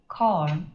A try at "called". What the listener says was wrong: Nó còn một cái chữ N đằng sau là không đúng rồi. Corn là không đúng rồi. It's called. Cold. Nó liên quan cái chữ mà mò. Nó không hề có chữ N đằng sau đâu nha. Không phải là môn, con, ton.